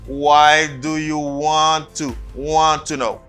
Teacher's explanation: when you're speaking fast, you just drop one T.